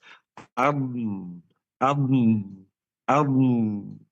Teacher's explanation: tepi lidah tepi kanan dan kiri bertemu langit di atas ad ini namanya istitalah.